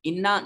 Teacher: انا نون مشدد ہے، غنہ واجب ہوگا